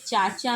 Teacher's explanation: उपर्युक्त विकल्पों में से डी में तालव्य ध्वनियों का प्रयोग हुआ है। वस्तुतः च वर्ग की ध्वनियां तालव्य वर्ग के अंतर्गत आती हैं